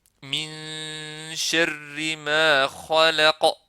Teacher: Ici, nous avons ikhfa de noun dans shin. Ici, noun ne disparaît pas complètement. Ce n'est pas un idram kamil, c'est un ikhfa, le fait de cacher